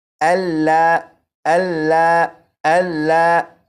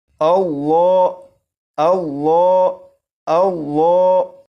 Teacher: لفظ اللہ کے لام کو پور یعنی موٹا پڑھیں گے